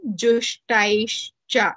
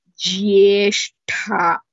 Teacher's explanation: Jushtaischa ta is alpaprana, whereas jyeshtha tha is mahaprana.